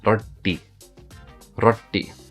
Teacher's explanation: In the Indian accent, it would be roti, and you will notice the T is kind of curved when you pronounce the T. So it's not T, it's T, roti, roti.